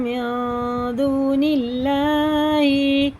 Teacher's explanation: یہ بھی جتنے بھی بلو کلر کے ہیں یہ اخفا اور غنہ کر کے پڑھیں گے. اس نون کو ناک میں لے جا کے ایک الف کے برابر پڑھیں گے